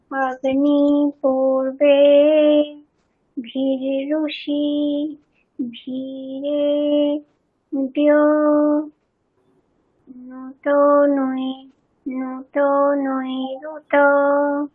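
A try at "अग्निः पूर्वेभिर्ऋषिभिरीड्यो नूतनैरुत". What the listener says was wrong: নু দীর্ঘ, হ্যাঁ, আবার।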